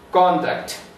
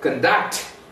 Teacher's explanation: Same word is used as noun and verb. When it is used as noun, the stress is on the first syllable.